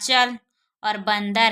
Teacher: ऐसे वर्ण जिसका उच्चारण मुख और नाक दोनों से होता है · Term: अनुनासिक